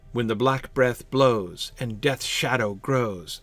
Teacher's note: So there are some variations, but the pattern seems pretty clear. Unstressed, stressed, stressed, stressed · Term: spondaic feel